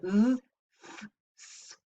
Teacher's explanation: the articulators come close together, but there's only a little channel. But there is still air flowing, and that causes turbulent airflow. It sounds hissy. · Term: fricatives